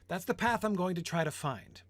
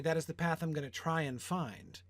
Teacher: try and find are equally weighted joined by and